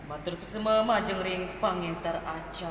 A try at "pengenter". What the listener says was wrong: nah jangan pangenter ingetang pengenter